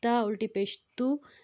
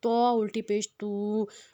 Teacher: اس میں ہم نے تے کو پتلا رکھنا ہے اور تو کو ہم نے موٹا رکھنا ہے۔